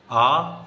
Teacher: विवृत स्वर आ, जिसमें सबसे ज्यादा मुख खुलता है।